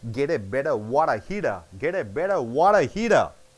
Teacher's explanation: All the T's are changed into D.